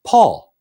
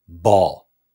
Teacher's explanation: P pushing air out a little explosion of air